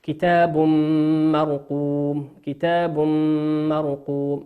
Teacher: وقوله سبحانه وتعالى كتاب مرقوم نون تنوين أتى بعده حرف الميم والميم من حروف الإدغام بغنة تغن بمقدار حركتين